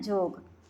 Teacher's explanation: योग है तो उसको नागपुरी में बोलते हैं जोग, संयोग है तो उसको बोलते हैं संजोग